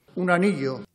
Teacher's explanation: La n de un se ha unido a la a de anillo. Por eso parece que está diciendo un anillo.